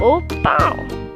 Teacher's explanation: It's nasal, like you're pinching your nose.